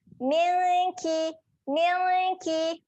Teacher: Dia ada bacaan dengung kat sini. Dengung ni dia sedia nak sebut huruf kaf. Jadi dengung kita tu kita akan hasilkan di pangkal lidah.